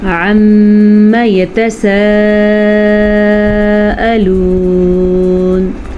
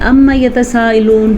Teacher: عم میم کے اوپر شد ہونے کی وجہ سے ہم یہاں پہ میم پہ غنہ کریں گے۔